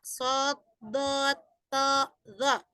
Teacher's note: itbaq lidahnya lengket ya, menempel gitu, bisa dibilang lengket ke langit-langit ya. Makanya itu lebih, kalau di kitab Syarah Fathul Rabbil Bariyah dijelaskan tepi lidah mengangkat ya.